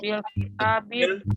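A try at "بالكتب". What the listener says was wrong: Kalau kitab itu paknya ada alifnya, itu nggak ada alifnya. Itu kitab begini nih tulisannya.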